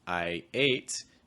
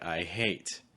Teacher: a lot of italian speakers add h sounds into pairs of words into sentences